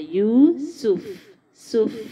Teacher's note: سین کو باریک ادا کرنا ہے اور فا کو ٹائم دینا ہے